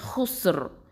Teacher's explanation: அந்த ரா வந்து தஃப்ஹீமாக தான் ஓதணும்